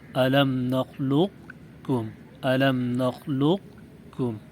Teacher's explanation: پہلے قاف پڑھیں مکمل، پھر کاف پڑھیں، اور پہلے قاف کو بغیر قلقلے کے بغیر ہلائے پڑھیں۔